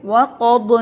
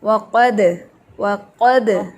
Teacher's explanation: قاف موٹا ہے لیکن دال نہیں موٹا، دال باریک ہے